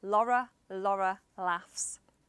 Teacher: When a T has a vowel on either side, some old school Scousers may change the T for an R.